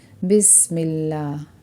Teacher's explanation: اللہ کے لام سے پہلے حرف پر زیر آ رہا ہے تو اس لیے اس کو باریک پڑھا جائے گا